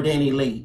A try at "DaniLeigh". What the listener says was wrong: No, that's not Lee. That looks like Lee. Lay?